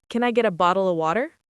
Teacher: Get a becomes getta. And of becomes a. Tiny, almost gone.